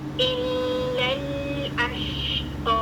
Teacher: شین کا مخرج اور اس کی شارپنگ ساؤنڈ ہے, یہ کلیئر کرنی ہے, لیکن شین کے لیے ہونٹ آگے نہیں آئیں گے